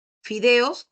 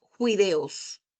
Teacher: reemplazan la F por la J